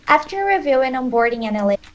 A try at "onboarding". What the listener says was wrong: Onboarding, stress the on, not the board.